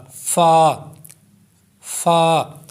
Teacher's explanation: ऊपर के दांतों के किनारे और निचले होठों के तर हिस्से से य अदा होता है · اوپر کے دانتوں کے کنارے اور نچلے ہونٹوں کے تر حصے سے یہ ادا ہوتا ہے۔ جب اوپر کا جو حصہ ہے آپ کے دانتوں کا کنارے، اوپر کے دانتوں کے کنارے نیچے والے ہونٹوں کے تر حصے میں لگیں گے پھر یہ ادا ہوگا۔ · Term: حروف شفویہ